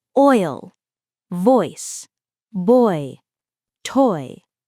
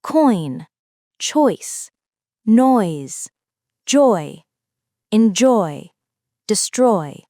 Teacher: This diphthong starts with the /ɔ/ vowel and glides upward toward /i/. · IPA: /ɔɪ/